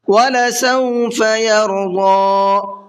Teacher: ضاد کو پر کر کے پڑھیں گے اور ساتھ ساتھ کھینچ کر کے بھی پڑھیں گے